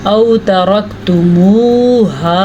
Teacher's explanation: तरक्तुमूहा, ये वाव मद्दा, जैसा कि ये वाव लीन है तो ये वाव मद्दा है, इसको खींच के पढ़ेंगे